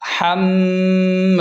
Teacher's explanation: یہاں میم پر تشدید ہے تو سختی کے ساتھ میم پر زور دیں اور غنہ بھی کریں، یہاں پر غنہ بھی ہوگا.